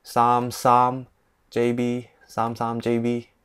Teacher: start with the first tone, end with the first tone with the number 3 in Cantonese